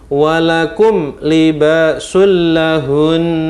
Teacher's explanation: Waqaf seperti ini tetap harus dibaca hunnah, bahkan hunnahnya lebih lama pada saat waqaf. Pada saat waqaf seperti ini, waqaf, maka hunnahnya bisa disebut 1,5 alif atau 3 harokat. · ketika waqaf, maka bacaan hunnahnya lebih lama, yaitu 1,5 alif atau 3 harokat.